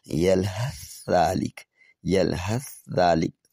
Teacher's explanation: یلحث ذالک، یلحث ذالک، تھا کا ذال میں ادغام